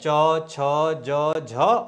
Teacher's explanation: इनके स्पर्श करने में संघर्ष करना पड़ता है इसलिए इस पूरे चौ वर्ग को हमने एक नाम दिया स्पर्श संघर्षी